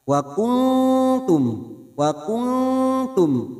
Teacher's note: Ini juga yang disebut dengan ikhfa aqrab. Kita samarkan bunyi nun sukun, kita dengungkan 2 atau 3 harokat. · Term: ikhfa hakiki